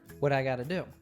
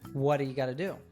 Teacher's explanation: the full version of this word would be got to but as you can see to reduces to a D sound